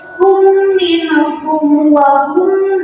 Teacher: Jadi ketika huruf hijaiyah termasuk ke dalam huruf al-khaisum, salah satu keterangannya itu adalah ketika mim mati bertemu dengan huruf mim, itu disebut sebagai al-khaisum. Dibacanya itu makhraj hurufnya itu adalah di dalam hidung.